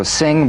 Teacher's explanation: the tongue to the soft palate vibration coming through the nose feel a twangy nasal resonance